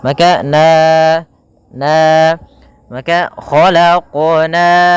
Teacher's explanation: Kemudian pada lafal na ada bacaan mad tabi'i, yaitu kita lafalkan ya panjangnya fathah bertemu alif sepanjang 2 harakat